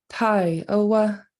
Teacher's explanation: in southern it'll be a falling a long falling